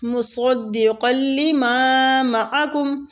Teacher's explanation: الف مد والی میم کو کھینچیں گے، دوسری میم کو نہیں کھینچیں گے